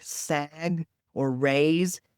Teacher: verbs that are phonologically difficult like sag or raise because they have that voice consonant at the end of the word which makes it a little harder for kids to produce.